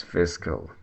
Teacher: In British English, the stress is on the first syllable, fiss. The second syllable is weak and not prominent. It's cal. So it's fiscal. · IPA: /ˈfɪs.kəl/